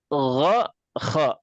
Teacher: Itu tenggorokan yang paling dekat dengan mulut.